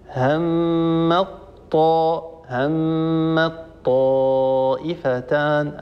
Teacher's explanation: فالان لما ندغم التاء في الطاء نقول هم مط هم الطائفتان ادغمنا التاء في الطاء فنشا الطاء مشدده يرتفع المخرج عنهما ارتفاعه واحده لما نقول عنهما يعني عن الحرف الاول المدغم وعن الحرف الثاني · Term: الادغام, الطاء المشددة